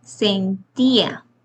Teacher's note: es una vocal cerrada tónica y una vocal abierta átona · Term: hiato